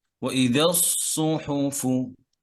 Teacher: সদ মোটা করে, ওয়াইদা যখন ধরবেন তখনও মোটা